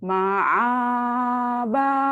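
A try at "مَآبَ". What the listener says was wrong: Bukan ain tapi alif. Ma'aba.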